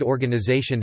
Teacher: the word organization has primary stress on the fourth syllable, secondary stress on the first, and the second, third and fifth unstressed